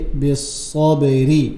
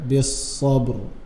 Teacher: If I'm joining this ra, the last ra, with the next ayah or the next surah, it will be بالصبر in a light manner. But if I'm stopping in a heavy manner, بالصبر.